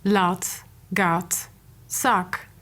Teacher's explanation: american english speakers use a short palm vowel in lot words